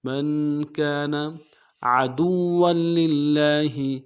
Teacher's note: عدوا میں عین کو موٹا کریں گے، دال کو واو کے ساتھ ملانا ہے